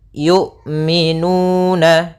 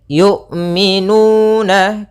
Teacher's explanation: Jahar yaitu tertahannya nafas kita, sedangkan syiddah yaitu tertahannya suara. Maka ketika melafalkan hamzah itu tidak ada nafas yang dialirkan dan tidak ada pula suara yang dialirkan, tapi dia suaranya tertahan dan nafasnya tertahan. Kemudian yu'minu, hati-hati jangan sampai terbaca dengan jangan dibaca dengan ain.